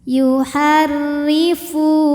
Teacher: Ra ini dibunyikan secara tarqiq karena berbaris kasrah, jadi bacanya tipis.